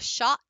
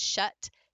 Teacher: they are both in the middle and they're both low they're both relaxed